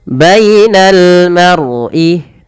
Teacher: tebalkan lafal ro-nya karena dia ada huruf ro, kita namakan dengan ro tafkhim. Harus ditebalkan, jangan dibaca mar'i tapi maru.